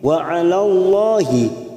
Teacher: lam jalala yang didahuli fathah kita baca tafkim